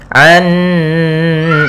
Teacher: Kemudian pada lafal an, nah itu ada bacaan gunnah, yaitu cara membacanya kita tahan dulu suara n-nya